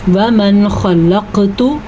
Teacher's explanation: قاف کے اوپر ساکن ہے تو قلقلہ بن رہا ہے۔